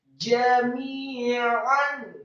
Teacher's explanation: jimnya dibaca tafkhim tebal fathah 1 harokat, kemudian mimnya dibaca tipis kasroh 2 harokat karena setelah huruf mim yang kasroh ada ya sukun.